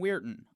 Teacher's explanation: the phonetics shows us a glottal stop followed by a syllabic nasal